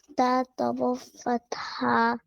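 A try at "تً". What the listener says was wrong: We have to add the un sound in ta. Come on, do it. Yeah, tan.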